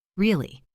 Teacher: If I say really with a flat dropping tone, it means I agree.